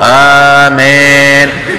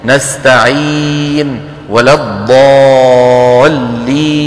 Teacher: الياء بدها تكون إي، الياء العربية إي